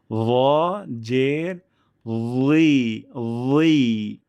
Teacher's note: এটা মাখরাজ একই, জিহ্বার আগা সামনের উপরে ২ দাঁতের আগা থেকে র, জাল, কিন্তু র বলার সময় মোটা করছি, অর্থাৎ জিহ্বার শেষ অংশ একটু উপর দিকে উঠিয়ে দিচ্ছি, তাহলেই সাউন্ডটি শোনা যাবে এমন র, জের, রি, রি।